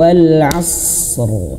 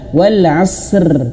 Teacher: Tapi harus ditahan dulu. Wal asr rnya tebalkan bukan wal asr rnya tipis. Tidak ya. Harus betul-betul jelas dia tebal huruf rnya.